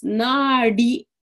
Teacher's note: the D is retroflex. Nadi, hard D in the back of the throat or the palate. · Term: retroflex D